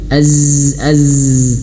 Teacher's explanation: dia memiliki sifat sofir. Dia mengalir kayak seperti z.